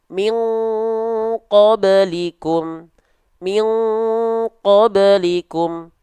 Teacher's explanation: kalau kita melafalkan nun sukun ketemu qaf, contohnya pada kalimat min qablikum, maka itu dilafalkan mendekati bunyi ang. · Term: ikhfa ab'ad